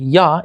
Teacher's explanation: the English Y sound ya is a voiced palatal approximant